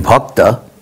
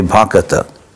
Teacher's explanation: sometimes in Bengali they insert an extra vowel.